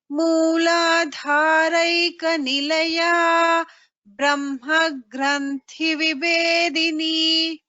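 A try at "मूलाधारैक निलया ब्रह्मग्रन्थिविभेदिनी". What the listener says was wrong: It is correct. Just that gra just prolonging a little bit. That's what I'm hearing. Correct, because the Dvitva will come here.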